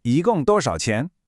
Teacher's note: Notice how my intonation naturally rises just a little at the end, just like any question in English.